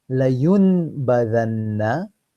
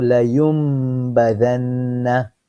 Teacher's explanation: So meme sound will come out, not the noon. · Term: iqlab